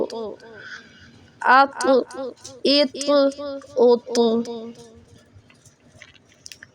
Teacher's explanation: ات جیسے تا ہے یہ بھی اسی طرح سے، لیکن اس کو ہم موٹا پڑھیں گے، تا کو موٹا نہیں پڑھتے. یہ تواں نہیں، ناک میں آواز نہیں جاتی بلکہ ہم اس کو موٹا پور کر کے پڑھتے ہیں.